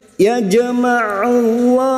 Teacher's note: huruf Ain Jangan samakan dengan Hamzah huruf Ain yang memiliki sifat tawasud dan jahar